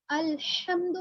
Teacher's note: बड़ी हा। बड़ी हा है, गले के दरमियानी हिस्से से, वसतुल हलक से अदा होगी।